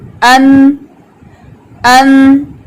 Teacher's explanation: طرف لسان جب ثنایا علیہ, رباعی اور انیاب کے مسوڑوں کو لگے تو نون ادا ہوتا ہے